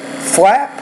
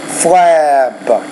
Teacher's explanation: the P is a voiceless consonant, the B is a voice consonant. So the vowel before the voiceless consonant will be a little shorter.